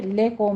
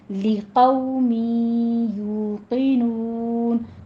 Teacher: لی لام کی آواز باریک رکھیے